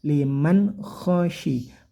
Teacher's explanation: khoknya bunyikan kasar atau ada dengkurannya